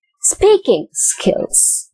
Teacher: i'm emphasizing the word speaking more than i emphasize the word skills